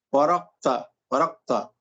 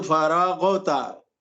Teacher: یہاں قلقلہ نہیں ہونا چاہیے، بلکہ بالکل نارمل طریقے سے اسے پڑھیں